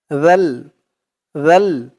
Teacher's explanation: সাকিন জি আর এই জালের আওয়াজটা একদম নরম পাতলা করতে হবে জিহ্বার মাথা উপরের দাঁতের মাথার সাথে লাগবে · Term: জালের উচ্চারণটা